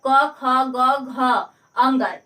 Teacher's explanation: जो क का वर्ग होता है क ख ग घ अंग, यह जो होता है कंठ से बोला जाता है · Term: कंठ वर्ग